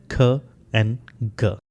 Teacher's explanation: ख एंड ग साउंड में the back of the tongue contacts the वलम। Back of the tongue contact करता है वलम को। यानी back of the tongue touch करेगा व्हीलम को।